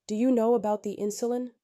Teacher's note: Rising tone invites response, helps check understanding.